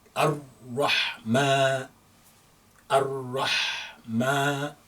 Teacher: you may not see a lengthening alif there, but we need to pronounce that with a little bit of elongation to make it longer